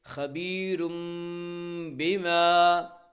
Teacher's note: الف سے پہلے زبر ہے اس لیے الف مدہ و الف مدہ کو ایک الف کے برابر کھینچ کر پڑھیں گے